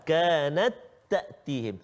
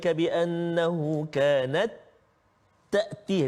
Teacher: Cumanya masukkan ta yang pertama tu ke dalam ta yang berdua. Sama sifat sama makhraj.